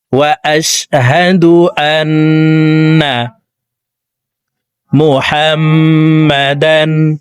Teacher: হরকতের বামে মিমের উপরে তাসদিদ আছে, এই কারণে জবরওয়ালা হাটি তাসদিদওয়ালা মিমের সাথে 3 সেকেন্ড পরিমাণ গুন্নাহ করে পড়তে হবে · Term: ওয়াজিব গুন্না